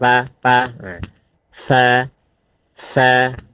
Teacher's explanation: fa, jelaskan hamsnya, udaranya, ya. Alirkan.